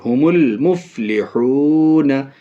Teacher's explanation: الف کو نہیں پڑھیں گے، صرف لام کو پڑھیں گے۔ ہم المفلحون، یہ 2 قمری کی مثال ہے۔